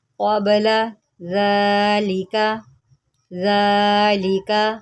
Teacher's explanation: ذال کے اوپر کھڑا زبر ہے، اس کو ہم نے ایک الف کے برابر لمبا کرنا ہے.